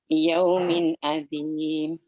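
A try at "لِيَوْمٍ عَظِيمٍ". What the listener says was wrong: Bedakan zal sama dha, Bu. Liyaumin azim ya. Kalau zal azim ujung lidah saja. Kalau zal ini dot agak banyak ujung lidahnya yang nempel. Azim.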